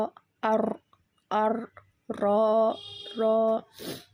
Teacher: நுனி நாவோட மேல்பகுதி மற்றும் மேல்பற்களின் ஈறுகளுடன் இணைத்து வெளியாகும் ரா அர் அர் ரா ரா இதுவும் வந்து நாக்கோட ஃர்ஸ்ட் நுனி அந்த